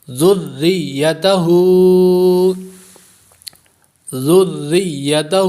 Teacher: پڑھتے ہیں، زال کو را کے ساتھ ملاتے نہیں ہیں، تو زال کو را کے ساتھ، را کو یا کے ساتھ ملانا ہے، کیونکہ را بھی مشدد ہے اور یا بھی مشدد ہے